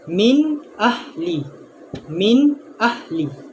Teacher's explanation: menzahirkan nun sakinah atau tanwin yang bertemu dengan huruf-huruf halki yang 6 dengan jelas tanpa dengung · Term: izhar halki